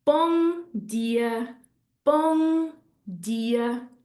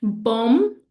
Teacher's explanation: what we could do when we see a word ending in an M is to actually make it NG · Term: nasal sound